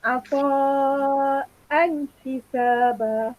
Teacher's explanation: bacaan jelas kita tekankan an tu. Jangan gantungkan lidah kamu seolah-olah nak dengung.